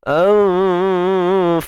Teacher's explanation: Nun mati jumpa fa ni hukumnya ikhfa haqiqi. Sembunyikan nun apabila berjumpa dengan fa dengan dengung yang nipis.